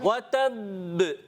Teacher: با مشدد ہونے کی وجہ سے قلقلہ کریں گے اور جماؤں کے ساتھ قلقلہ کریں گے